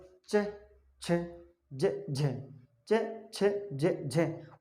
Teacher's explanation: स्पर्श भी करेंगे और घर्षण भी करेंगे, स्पर्श और घर्षण दोनों ही उच्चारण में करेंगे तो स्पर्श संघर्षी कहते हैं। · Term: स्पर्श संघर्षी व्यंजन